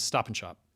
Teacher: the A vowel in and is reduced and the D typically disappears altogether as well and it becomes stop and shop.